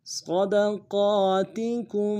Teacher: کاف کو میم ساکن کے ساتھ ملانا ہے، میم ساکن میں غنہ ہوگا